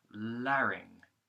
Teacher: begins with a light L going into an A vowel, then another R consonant going into a short I vowel, like in the word kit or in, and then the NG consonant using the back of the tongue, so like in the word song or sing, right?